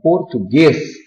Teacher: na palavra português, a sílaba tônica recaiu na última, então nós chamamos de oxítona.